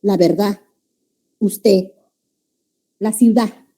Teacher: se va dejando de utilizar la de al final